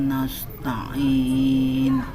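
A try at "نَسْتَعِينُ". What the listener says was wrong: Nah, maaf Bu, bunyi sin harus jelas. Nas. Kayak S biasa.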